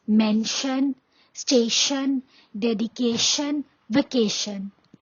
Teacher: The tion sound is also pronounced as shun sound.